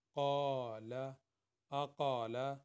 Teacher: یہ تینوں جو ہیں حمزہ قاف اور لام، یہ تینوں جو ہیں یہ 1 حرکت کے برابر پڑھے جائیں گے